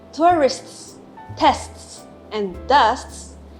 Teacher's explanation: For words ending in sts, for example, tourists, tests, and dusts, there is a stopped consonant t between the 2 s sounds. After the first s sound, we briefly stop the airflow, which makes the t sound